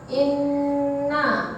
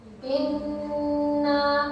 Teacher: hukum bacaan ghunna karena ada nun yang bertasydid dan cara bacanya ditahan serta dengung